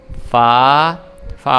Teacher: فا اپنے جو اوپر والے دانت ہیں ان کو ہم نیچے والے جو ہونٹ ہیں اس پہ لگائیں گے